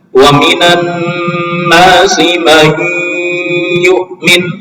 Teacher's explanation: tidak melibatkan kerja lidah hanya rongga hidung atau khais ya lidah enggak dilibatkan.